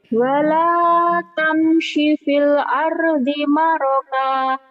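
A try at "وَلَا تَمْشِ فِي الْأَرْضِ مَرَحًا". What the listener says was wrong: Jawanya keluar Maroka. Maroha.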